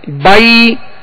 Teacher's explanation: اور جب یا لین ادا کریں گے تو زبر کو یا کی طرف یعنی با یا زبر بائی یا کی طرف لوٹے گی اور آواز گرے گی آخر میں آ کے. بائی یعنی زبر ادا ہو کر جب یا ادا کریں گے تو آواز کو گرا دیں گے